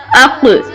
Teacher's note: یہ حروف لاہویہ میں سے ہے. جب زبان کی جڑ بالکل آخری حصے اوپر تالو کے نرم حصے سے ٹکراتی ہے تو موٹا قاف ادا ہوتا ہے، جیسے حمزہ قاف زبر اق.